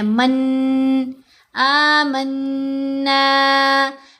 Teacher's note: تو یہاں ہم نے پڑھنا ہے سجداں قالوا آمنا، آمنا، آ کو لمبا کیا کھڑی حرکت کی وجہ سے، نون کو لمبا کیا مدہ لیٹر کی وجہ سے، پھر نون کے اوپر تشدید ہونے کی وجہ سے غنہ بھی ہے